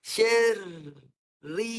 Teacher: Ri. Ra ada sabdu, jadi apabila dia ra yang pertama mati mesti bergetar dengan jelas.